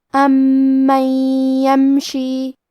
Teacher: کلمت امن میں میم پہ تشدید ہے، لہذا ہمیں یہ حرف کو 2 حرف کے برابر پڑھنا ہے